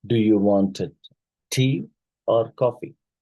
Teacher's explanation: So obviously the first choice, because in choice question, the rising pitch on the first item signals continuation